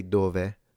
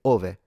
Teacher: However, in poetic Italian, you can drop the D.